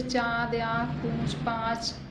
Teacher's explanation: अनुनासिक ध्वनियों का उच्चारण नाक और मुख दोनों से किया जाता है।